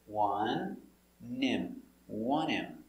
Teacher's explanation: the H in him is silent